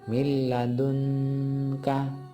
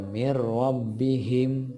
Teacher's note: tidak lagi dibaca dengung nunnya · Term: idgham bila guna